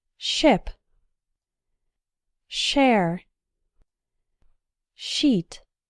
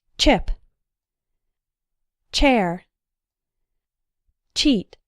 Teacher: the ch sound is just shorter and more explosive.